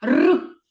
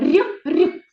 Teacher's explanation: р вимовляємо твердо а р р вимовляється м'яко